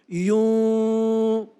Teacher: bibir tidak mengatup tapi seperti terdengar suara mim dan kalau kita katakan yuk rasa you masih ada aliran nafas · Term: ikhfa